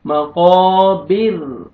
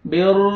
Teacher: پھر را کو ہم نے باریک کر کے پڑھنا ہے کیونکہ را ساکن اس سے پہلے کسرہ آ رہا ہے تو را کو باریک پڑھیں گے